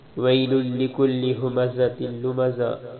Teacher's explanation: ویل لکل ھمزۃ لمزہ، ویل واو یا زبر وہی ہوگا اور لام پیش لل ہوگا، کیونکہ دوسری لام پر شد ہے، تو جس لام پر شد ہو اس کو 2 مرتبہ پڑھتے ہیں، پہلی والی لام کو دوسری لام کے ساتھ ملائیں گے